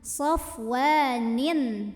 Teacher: tanwin ini dibunyikan dengan jelas, bunyinya an, safwanin tanpa ditahan. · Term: idhar halqi